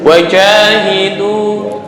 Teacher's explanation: Bukan jajan. Kalau jajan tuh ujung lidah dengan atas. Ini tengah lidah, naik ke atas.